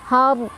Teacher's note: Ro-nya dibaca dengan tafkhim atau tebal karena ro sukunnya didahului oleh huruf berbaris fathah.